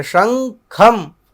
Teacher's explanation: શંખમ અહીંયા ઞકારનો ઉચ્ચારણ થાય છે, અનુનાસિક વર્ણ છે